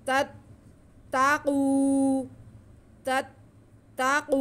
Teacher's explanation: वाव साकिन से पहले कॉफ पे पेश, इसलिए कॉफ की आवाज़ को हम खींच के पढ़ेंगे क्योंकि वाव मद्दा है यहाँ पर।